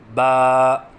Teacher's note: حرف ہے با، مخرج با دونوں ہونٹوں کی تری سے ادا ہوتا ہے، یعنی دونوں ہونٹوں کی تری کے ملنے سے با ادا ہوتا ہے۔ جیسے کہ آپ کو اس نقشے میں نظر آ رہا ہے کہ دونوں ہونٹوں کی تری والے حصے ملے ہوئے ہیں۔